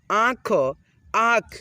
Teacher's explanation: यानी कि हम लोग जब इस शब्द पे यानी कि कोई भी शब्द पे लगा रहा है, अक्षर पे लगा रहा है, जब हम लोग इसको उच्चारण करते हैं ना मिला करके, तो हमारे नाक और मुंह दोनों को मिलने से उच्चारण आता है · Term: चंद्र बिंदु की मात्रा